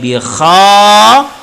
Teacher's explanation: Kha al-halqi bagian atas. Jadi ketika kita bi kha, maka kha itu ada getaran.